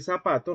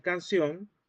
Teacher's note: independientemente de que haya S, de que haya C o de que haya Z, para nosotros todo va a sonar igual